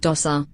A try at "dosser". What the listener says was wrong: Dosser. Not dozer.